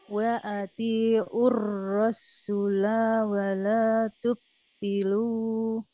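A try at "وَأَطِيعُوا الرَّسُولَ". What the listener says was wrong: Sinnya jangan pakai tasdid sinnya. Sinnya nggak ada tasdidnya. Tidak rasula, ya. Cuman ro-nya aja, ya.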